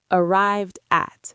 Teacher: The D connects to the vowel sound.